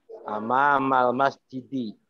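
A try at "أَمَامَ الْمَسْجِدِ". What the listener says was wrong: Amamal masjidi, bagus.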